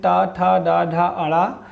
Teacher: अगर मूर्धा की बात करें, यानी जीभ का जो सिरा भाग होता है उसकी, तो मूर्धा से उच्चारित होने वाले वर्ग हैं टा, ठा, डा, ढा